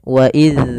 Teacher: Jaroyanusut atau maaf ya dia tidak ee ya mengalirnya suara tidak inhiwas tidak ditahan sebagaimana kalau dia syiddah. Maka harus dialirkan suaranya ketika melafalkan zal sukun. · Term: rakhawah